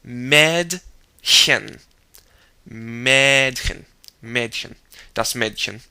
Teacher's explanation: raise the middle of your tongue, I'd say, to what they call the alveolar ridge, which is behind the upper front teeth, and push air through.